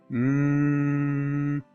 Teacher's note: Since the M is produced by the air going through the nasal cavity, we call it a nasal sound. Therefore, M is a nasal sound.